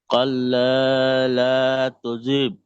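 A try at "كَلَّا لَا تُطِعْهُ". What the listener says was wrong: তুজিব হয়ে যাচ্ছে। তা পেশ তু ত আইনজের তীর, তু তীর।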